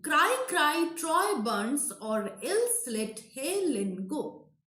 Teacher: So Helen is disyllabic, he is stressed, Len is unstressed, and go is also stressed.